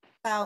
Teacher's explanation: Sí, es sorda. Aparece como sorda y dental.